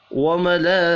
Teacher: लाम के ऊपर बड़ी मद है, 5 अलिफ के बराबर खींच कर पढ़ेंगे। हा के नीचे खड़ी ज़ेर है, एक अलिफ के बराबर खींच कर पढ़ना है।